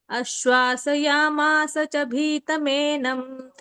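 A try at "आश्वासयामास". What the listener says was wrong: ಅದು ಆಶ್ವಾಸಯಾಸ. ಆ ದೊಡ್ಡ ಆ ಇದೆ ಮಾತಾಜಿಲಿ. ಆಶ್ವಾಸಯಾಮಾಸ ಬರುತ್ತೆ.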